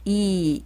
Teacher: 2를 말할 때는 양옆으로 2 길게 발음하시고요